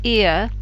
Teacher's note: let's look at the first one ear which you can see is made up of an e and then that very short little er sound very neutral sound